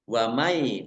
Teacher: nun sukun bertemu dengan huruf ya, idgham bi gunnah, masuk dengan mendengung, yaitu mendengung ya, ditandai dengan ya-nya ada tasdidnya.